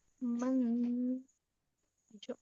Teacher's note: نون پر جزم ہے، یہاں پر غنہ ہوگا کیونکہ اخفا کے 15 حرفوں میں سے جیم آ رہا ہے، تو یہاں پر نون کی آواز کو ناک میں چھپا کے پڑھیں گے، اخفا کریں گے.